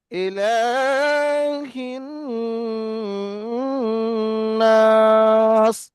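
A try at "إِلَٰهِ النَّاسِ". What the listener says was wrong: নাস টান দিতে হবে, চারালি পরিমাণ টান হবে।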